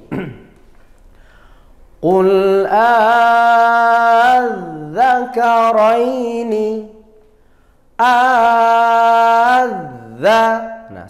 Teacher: badal bertemu tasydid kalau terjadi seperti itu maka namanya mad farqi Mad farqi panjangnya ada tiga Alif atau enam harokat